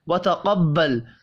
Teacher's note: قاف حروف مستعلیہ ہے، پر پڑھیں گے